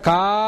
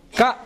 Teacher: కా అని పలుకు అంటే 2 చిటికలు వేసుకోండి, క అని పలకంటే 1 చిటిక వేసుకోండి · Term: మాత్రాకాలం